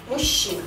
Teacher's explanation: Причем у нас здесь ща, она не удвоенная, она одинарная.